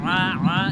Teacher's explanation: আইন জবর আ অনেকে আ বলে, আ বললে হবে না, বলতে হবে গলার ভিতর থেকে আ আ এভাবে। আইন জবর আ, আইন জবর আ, আইন জেরে ই, আইন জবর আ, আইন জি আইন পেশ উ।